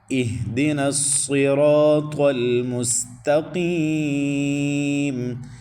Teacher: حمزہ کے بعد ہا، ان دونوں کو حلق کا آخری حصہ جو سینے کے ساتھ متصل ہے وہاں سے ان دونوں کا بھاری ساؤنڈ نکالنا ہے، دی، اور دال کو لمبا نہیں کرنا۔